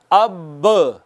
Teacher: تو آپ نے دیکھا جب آپ کہتے ہیں نا اب، دونوں ہونٹوں کا جو اندر والا تر حصہ ہے وہ ملتا ہے تو با ادا ہوتی ہے